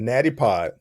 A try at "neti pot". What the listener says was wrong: You said natty pod.